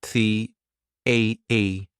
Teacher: Get your tongue in between your teeth, and this is a voiced th